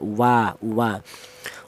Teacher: huruf wawu itu berasal dari kedua bibir yang renggang tidak nempel